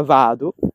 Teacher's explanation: le toniche in sillaba aperta sono lunghe quindi va di vado è lunga